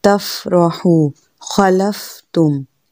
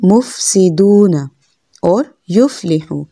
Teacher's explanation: फ़ा साकिन हो उससे पहले ज़बर, जैसे तफ़रहू, ऊपर वाले दांत नीचे वाले होंठ से लगेंगे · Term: फ़ा का मखरज